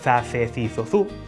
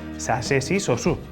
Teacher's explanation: Se és da zona zetacista de Galiza, como a min, lerás za, ce, ci, zo, zu, e se és da zona seseante, entón lerás sa, se, si, so, su